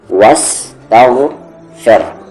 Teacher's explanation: غین کا مخرج اپر تھروٹ، اوپر والا حلق جہاں سے خا نکلتا ہے